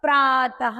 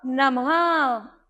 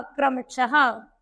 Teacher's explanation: विसर्ग आते हैं, इनकी ध्वनि अह की तरह बोली जाती है।